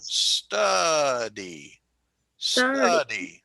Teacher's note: We have 2 syllables. Study. And the accent is on the first one.